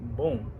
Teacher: When you see the word bom, you don't see the sign of the nasal sound in the vowels, but it's nasal sound. It's not as an nasalized sound, because you say boom, boom, not boom, boom.